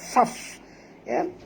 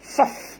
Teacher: Min a'nabin wa hafaf, wa ha pedas, faf, bunyikan hamas pada fa, faf, ketat gigi atas ke bibir bawah